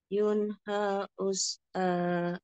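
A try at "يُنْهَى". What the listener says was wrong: nah ketika nyamung kurang hati-hati Bu Maksudnya h-nya Kurang panjang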